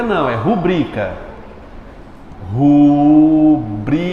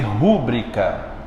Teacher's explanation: Qual é a mais forte? É o bri.